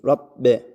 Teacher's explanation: Şeddeli b var gunne yapmıyoruz. Yani nefes vermiyoruz.